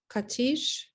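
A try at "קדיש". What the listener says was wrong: Okay, remember that that's a definite D sound. Duh.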